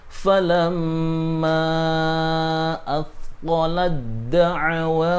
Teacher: Ketika tak taknis di sini bertemu dengan dal, dal ini termasuk huruf tak taknis yang dibaca idgham, sehingga berbeda cara baca taknya dimasukkan ke dalam dal